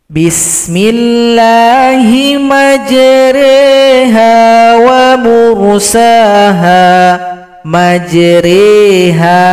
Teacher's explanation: Huruf ra dirubah menjadi re. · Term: imalah